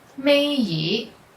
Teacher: when yi is the last character in certain words, it's pronounced with the second tone instead of the sixth tone.